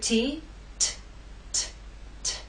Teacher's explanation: a consonant sound that is made by stopping the airf flow in the case of T the air flow is stopped by the tip of our tongue and that hard bump behind your Upper Front Teeth the tip of your tongue touches that hard bump and stops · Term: true t